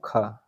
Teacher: स्पर्श व्यंजन कंठस्थ ध्वनि, अघोष तथा महाप्राण ध्वनि है